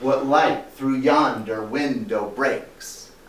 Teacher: meter so dum da dum da dum da dum da dum each alternate syllable is stressed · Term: iambic pentameter